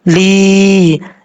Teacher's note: عین زبر را، لام زیر یا لی، لام کے بعد یا مدہ ہے، ایک الف کی مقدار لمبا کریں گے